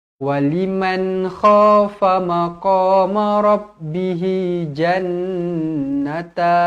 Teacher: Waliman, nun yang bertanda mati, izharu halki, jelas dan terang.